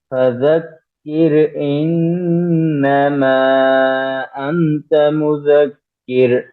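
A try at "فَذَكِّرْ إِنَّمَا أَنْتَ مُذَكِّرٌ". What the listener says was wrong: انت میں اخفا کیجیے، انت مذکر.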